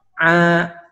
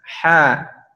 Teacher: huruf ain tidak keluar nafas, huruf ha sambil menghembuskan nafas